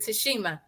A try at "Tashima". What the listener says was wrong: It's Tashima, no H. We always add the H in there.